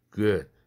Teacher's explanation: good 우라는 모음은 이것은 이완 모음으로 짧습니다. 그래서 긴장되지 않습니다. good 하고 두 입술을 쭉 내미는 그런 굿이 아닙니다.